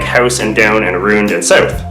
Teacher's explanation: Canadians have a tendency to raise their tongues in their mouths when they make ow sounds, as I just did right then when I said mouth instead of mouth, which is when you keep your tongue down lower in your mouth. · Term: Canadian raising